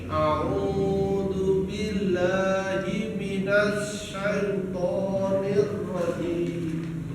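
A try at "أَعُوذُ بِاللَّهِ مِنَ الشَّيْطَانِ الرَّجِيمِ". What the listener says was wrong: Ya, masih sin kecil ya.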